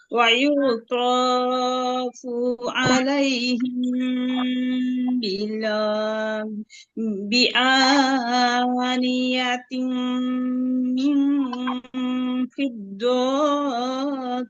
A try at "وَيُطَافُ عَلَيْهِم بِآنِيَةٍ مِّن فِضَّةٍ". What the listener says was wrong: ফিরতো টান দিচ্ছেন কেন আপু? ফিরতো টান নাই। ফিরতো কিউ কি পড়েন আপু? দেখে পড়েন।